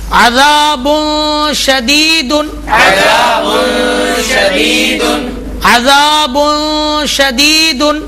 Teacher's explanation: غنہ ہو رہا ہے لیکن نون ظاہر ہو رہا ہے، نون کو چھپا کر پڑھنا ہے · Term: اخفا کا قاعدہ